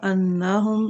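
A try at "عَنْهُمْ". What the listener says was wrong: अन्नहुम नहीं ना बनेगा, शक नहीं है। अन,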